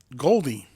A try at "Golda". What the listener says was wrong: No, you're pronouncing E. It's like, Golda.